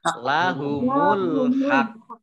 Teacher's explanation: Nah, oleh karenanya maka ditahan dulu ya. Karena qaf itu kan qaf sukun kan qalqalah. Memantul, dan ini double, maka ditahan dulu ya, baru memantul. Jadi tidak lahumul haq ya, tidak lahumul haq, tapi ditahan dulu lahumul haq.